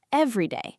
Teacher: When we say every day, one word, it all flows together, and the stress falls on the very first syllable, every day.